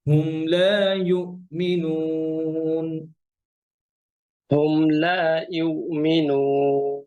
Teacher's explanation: আপনার ইয়াটা হামজা হয়ে যাচ্ছে, বুঝতে পারছেন? ইউ, ইউ জি। হচ্ছে ইউ, জিহ্বার মাঝখান থেকে।